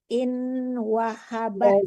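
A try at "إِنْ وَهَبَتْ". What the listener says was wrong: Jangan in, tapi dengung. Ya, wow itu walaupun tidak tasdid, tapi kalau tunun ketemu wow itu dengung ya.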